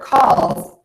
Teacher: if I say the word calls, yeah, there's a really strong Z there. But if I'm using that word in a sentence, the Z might not be as strong depending on the sound that comes after the word calls.